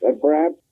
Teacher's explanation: he does drop the H in perhaps.